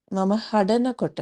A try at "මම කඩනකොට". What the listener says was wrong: இல்ல ஹடன கொட்ட இல்ல. கடன கொட்ட. கடன கொட்ட.